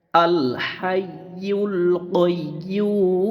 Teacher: ইয়ার উপরে পেশ, পেশের বাম পাশে ওয়াও, ওয়াওর উপরে জজম, পেশের বাম পাশে জজমালা ওয়াও মাদের হরফ, মাদের হরফের বামের হরফে অক্ফ হইলে মাদ্দে আরজি, মাদ্দে আরজি তিন আলিফ টেনে পড়তে হয়